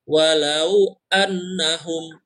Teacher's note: dia tidak semata-mata tasydid yang ditekan seperti Huruf lain Tetapi dia harus ditahan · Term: huruf ghunnah